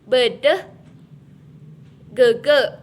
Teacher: merupakan vokoid tengah, setengah rendah, tak bulat dan semi terbuka.